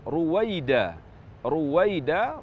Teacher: Ruwaida, ra berdhammah maka dibaca tafkhim.